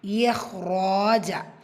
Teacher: ரா வந்து ஃபத்தாவில் இருக்குது, வலினப்படுத்தி ஓதணும். கூடவே அலிஃப் மதா இரண்டு ஹரக்கத்தில் நீட்டம் கொடுக்கணும்.